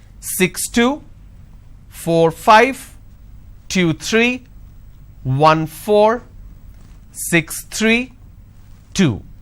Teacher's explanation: for every two digit the second digit my tone is going up · the moment i drop my tone that means it's the end of the series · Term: intonation